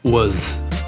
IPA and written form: wəz (was)